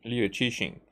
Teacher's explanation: it's like there's an S merged with an sh sound